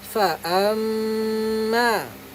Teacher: Jadi kena dengung dekat mim syaddah.